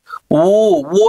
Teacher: ఊ అంటే ఇక్కడ చూడండి పెదవులు రౌండ్ చేస్తాయి అన్నమాట